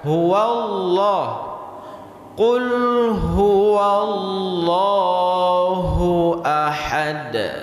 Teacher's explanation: lafzul jalalah di sini harus dibaca tebal. Huwallah. Huwallah. Lidah kita harus terangkat.